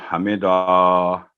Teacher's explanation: جب وقف ہوتا ہے تو حمدہ, حمدہ نہیں ہوگا, لمبی آواز نہیں ہوگی